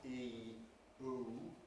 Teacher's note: We conventionally treat E and oo as long vowels, but we could well argue that they're really diphthongs of the type E, oo. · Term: diphthongal movement